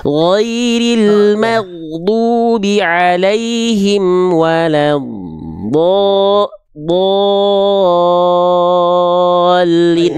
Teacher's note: Do mad lazim, dia panjang, 6 harokat.